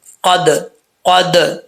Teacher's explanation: آگے دال ہے ساکن ہے، اس میں قلقلہ ہوگا کیونکہ یہ حروف قلقلہ میں سے ہے۔ قد قد، اب اس کو اگر قد جا پڑھیں گے تو غلط ہو جائے گا، آواز رکنی نہیں چاہیے۔